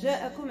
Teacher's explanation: عندي مد متصل واجب ست حركات